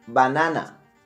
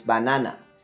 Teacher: as you will notice I will pronounce harder the second syllable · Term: accent